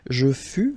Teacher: keep in mind that final S is not pronounced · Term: final S not pronounced